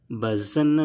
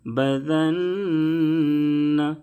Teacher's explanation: ذال کو نہایت نرمی سے پڑھیں. ذال کے دائرے میں زا کی آواز نہ نکلے. بزن نہیں پڑھیں گے، بذن.